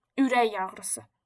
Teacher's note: Ürək y səsini verməsi üçün mütləqdir ki, özündən sonra saitlə başlayan söz gəlsin.